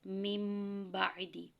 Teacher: نون جو ہوگا اس کو ہم میم سے بدل دیں گے، میم کا تلفظ ہوگا، ٹھیک ہے، تو ہم اس کو کس طرح سے پڑھیں گے، میم بعدی، غنہ بھی ہوگا، میم بعدی۔ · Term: اقلاب